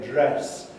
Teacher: Northerners tend to say dress with a rather opener vowel than Southerners who say dress.